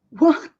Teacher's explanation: E quando demonstram muita surpresa, tende-se a marcar um pouquinho mais esse T. E se prolonga mais a vogal.